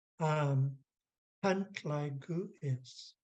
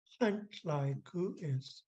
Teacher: Your breath is blowing from back here. So our underlined G is normally like a raspy H sound.